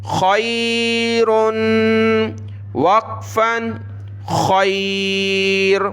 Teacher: اگلا لفظ دیکھیں، خا یا زبر خی، را دو پیش رن، خیرن، خا کو گلے سے نکالا، یا پر سکون ہے تو یا کے سکون کی وجہ سے خا کو یا کے ساتھ ملایا، خا یا زبر خی، را دو پیش رن، خیرن، وقفن خیر، را کو ساکن کر دیا، خیر۔ اس کو آپ نے کھا نہیں پڑھنا بلکہ خا پڑھنا ہے گلے سے نکال کر